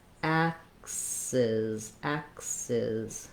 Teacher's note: So we end up having two Z sounds in axes.